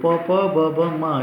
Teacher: ಎಲ್ಲನೂ ತುಟಿಯ ಸಹಾಯದಿಂದ ಉಚ್ಚಾರಣೆ ಆಗುತ್ತೆ. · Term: ಓಷ್ಟ್ಯ